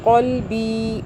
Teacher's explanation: با کو کھینچ لیا کیونکہ یا آ رہا ہے با کے بعد